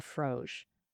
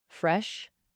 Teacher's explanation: Fro uses a back vowel. O, mouth more open, sounds fuller. Fresh uses a front vowel, e, tongue high, mouth narrow, sounds thinner.